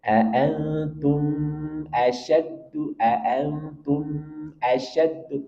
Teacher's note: sedikit kita alirkan untuk memberikan sifat bainiah pada huruf mim · cara membaca izhar syafawi harus jelas sesuai makhj dan sifatnya yakni pada saat menghadapkan huruf mim dengan cara merapatkan bibir kejelasan pengucapannya cukup satu ketukan tidak boleh lebih karena dikhawatirkan akan berubah menjadi ikhfa atau [Musik] ghunah tetapi perhatikan